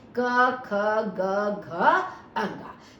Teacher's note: कवर्ग के पांचों वर्ण हमारे कंठे में आते हैं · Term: कंठे ध्वनियां